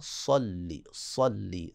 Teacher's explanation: اللہم صلی علی محمد، اللہ کو موٹا پڑھنا ہے، اللہم صلی، صاد کو موٹا، صلی صلی، صفت اطباق کو بھی اس میں جاری کریں